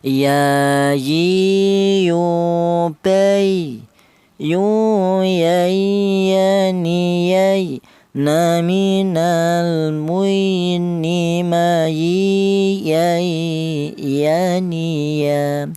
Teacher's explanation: keluarnya huruf berasal di tengah lidah ya. Di mana tengah lidah itu ditepati tiga huruf yaitu huruf ya ini, huruf jim dan huruf syin ya.